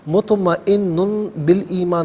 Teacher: پھر اس کے بعد نون پر 2 پیش کی تنوین ہے، تنوین کے بعد با آ رہا ہے تو تنوین کو میم ساکن سے چینج کر کے میم کی آواز کو غننے کے ساتھ ادا کریں گے۔ مطمئن بالایمان نہیں، مطمئن بالایمان، باقی نیچے زیر، اسے الایمانی کے لام ساکن کے ساتھ ملائیں گے، درمیان میں سے الف یعنی حمزہ کو حذف کریں گے۔